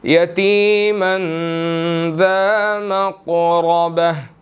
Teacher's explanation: را کے اوپر زبر ہے, ہم نے یہاں پر اس کو موٹا ادا کرنا ہے